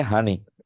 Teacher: নোয়াখালীর মানুষ পানিকে বলে হানি এটা ধ্বনি পরিবর্তন